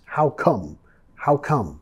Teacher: Nota que vamos a bajar de entonación al final.